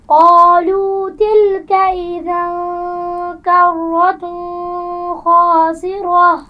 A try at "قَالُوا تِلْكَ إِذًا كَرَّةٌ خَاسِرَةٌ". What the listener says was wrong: ایک تو اذن حمزہ کو واضح کیجئے. کرتن خاسرہ، تنوین کے بعد حروف حلقی میں سے خا آ گیا ہے، تو کیا یہاں پر غنہ ہوگا؟ تو یہاں پر غنہ نہیں کریں گی.